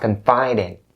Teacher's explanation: So you have to make sure that you bring the D sound over to in.